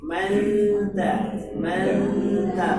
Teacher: Jangan mangta. Nun sukun bertemu ta itu jarak nun dan ta itu makhrajnya berdekatan, sehingga unsur kesamarannya tinggi. Manta, manta bukan mangta.